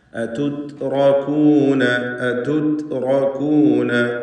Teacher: താഇൻ്റെ ഉച്ചാരണം ഹംസ്, ഷിദ്ദ തുടങ്ങിയ സിഫത്തുകളുള്ള അക്ഷരമാണ് എന്നത് പ്രത്യേകം ശ്രദ്ധിക്കുക.